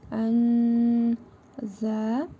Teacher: İhva qaydasına görə nun hərfini burnumuzda tələffüz edərək bir əlif miqdarı uzadırıq.